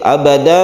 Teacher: tanwin fathah yang kita wakafkan sehingga membacanya itu adalah Mad iwad satu Alif saja